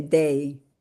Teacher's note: They always have a glide at the end on that.